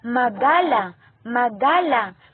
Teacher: Ang pailong naghaharang ang hangin na dapat ay sa bibig lumalabas dahil sa pagtikom ng mga labi, pagtukod ng dulong dila sa itaas ng mga ngipin o kaya'y dahil sa paggawa ng malambot na ngala-ngala. Ang nangyari ay hindi sa bibig lumalabas ang hangin kundi sa ilong.